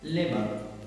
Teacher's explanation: In Britain, For example, labor, L-A-B-O-U-R, labor. In Britain, they don't pronounce R, labor. In American, labor, labor.